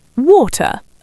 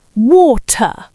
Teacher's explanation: The T is sharp. The R at the end is soft or non-existent. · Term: clean T